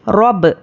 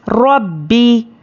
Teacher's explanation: حروف خلخلہ ہے، جب اس کو ہم ہجے کریں گے تو اس پر خلخلہ ہوگا لیکن روانی میں خلخلہ نہیں ہوگا